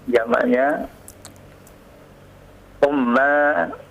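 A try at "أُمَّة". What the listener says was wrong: Masa di dhammah?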